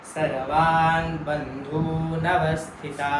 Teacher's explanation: बंधू शब्दाचा धू दीर्घ आहे त्यामुळे तो लांबवायचा